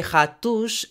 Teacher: S at the end of words or before consonants makes a sh sound. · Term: S chiado